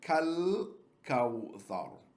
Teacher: the alif is written, but it is silent. We jump over, and the lam takes the sukoon. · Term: huruf al-Qamariyyah